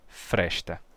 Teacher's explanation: no meu sotaque o S é chiado antes de T, então eu não digo fresta, e sim fresta.